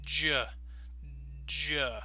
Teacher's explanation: It starts with the d sound, but it finishes with a zh sound. So when you put them together, your tongue and your mouth are going to be in the same position.